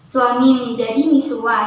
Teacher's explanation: metathesis, perubahan posisi bunyi dalam kata